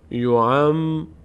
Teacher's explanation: یود احدهم لو یعمرو، میم دو بار خوانده میشه، یک بار به همراه ما قبل، یک بار به تنهایی